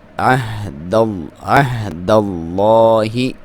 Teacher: لام کو پر پڑھیں گے کیونکہ اس سے پہلے زبر ہے۔ عین کو حلق کے آخری حصے سے کلیئر کر کے ادا کریں، ہا کے ساتھ ملائیں